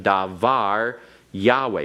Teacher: it is a word that has its Accent on the last syllable which is the normal syllable for accents